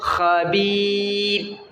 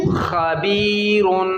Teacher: جب ہم خبیر پر وقف کریں گے تو را کو باریک پڑھیں گے، اور جب ملا کر پڑھیں گے تو موٹا